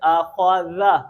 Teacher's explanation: خوا بھی موٹا اور ذال کو اس کے مخرج سے پڑھیں گے